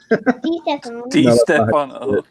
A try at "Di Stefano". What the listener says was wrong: No, that's not Gotta enunciate the D.